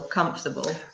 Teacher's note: we don't pronounce the second syllable